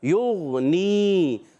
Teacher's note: غین میں قلقلہ نہیں ہوگا